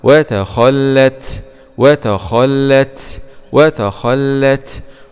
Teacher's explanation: تاء سكون مع الهمس